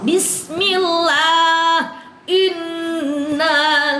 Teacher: Qillaha adalah lafaz Allah sebelumnya di kasrah, namanya tarqiq, tipis, jangan dibaca o. tapi dibacanya A.